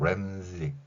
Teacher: 그리고 우리말에 없는 소리 say라고 발음하는 게 아니라 자신의 이름을 z라고 하니까 s에 해당하는 소리가 영어의 z 발음인 것을 알 수 있습니다. 글자를 s라고 썼지만 소리는 z 소리가 난다는 거죠